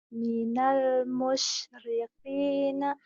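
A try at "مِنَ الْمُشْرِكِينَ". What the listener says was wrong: Jangan. Minal musyriqin. Kap biasa aja. Mana ini kakiku. Kak biasa. Kakak, kiki, kuku. Minal musyrikina.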